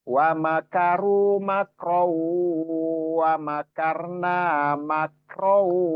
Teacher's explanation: Row harusnya ron karena ada waw di depannya jadi row masuk ke waw seolah-olah waw ini ada tasdidnya ya. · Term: Idgham bi gunnah